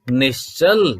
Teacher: और क्या हो गया वर्ग बदलने के साथ ही, वर्ग बदलने के साथ ही स नहीं श हो गए, यानी तालव्य शकार हो गया